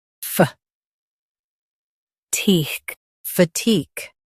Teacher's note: Stress teek and keep fuh light.